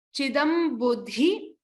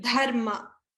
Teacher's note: that Mahaprana dha needs to be stressed upon